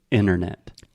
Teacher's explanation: we do not say the first T